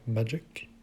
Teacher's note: prior to the suffix so what that gives us is an accentuation on the first syllable for the first word magic